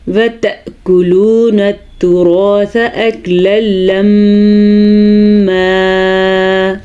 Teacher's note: وَتَأْكُلُونَ التُّرَاثَ میں حمزہ کے اوپر ساکن ہے تو کچھ ادھر جھٹکے کی کیفیت پیدا ہوگی